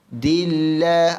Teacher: Dillah, Allah nipis. Dillah, Allah nipis kerana sebelum Allah ada huruf dal baris bawah